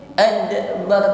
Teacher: Il ad, berikutnya dal sukun, maka ada sifat qalqalah yang menyertainya. Jangan ragu-ragu, kita tampakkan bunyi yang memantul.